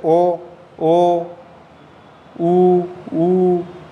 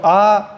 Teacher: आ है इसमें व्रतमुखी स्वर नहीं है, यानी कि होठ गोल नहीं होता इसके अंदर, जैसे ओ ओ उ उ, तो आ आ के अंदर व्रतमुखी स्वर नहीं है।